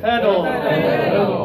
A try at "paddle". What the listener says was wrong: Open up for paddle.